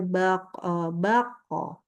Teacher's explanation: pantulan daripada huruf qf baik depannya fathah ataupun kasrah ataupun domah maka bunyinya kembali ke huruf qnya yang tebal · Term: Qalqalah